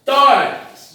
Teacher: termina em X e a sílaba forte é Tó. Também pertence à lei do roxinol, porque é um paroxítono terminada em X.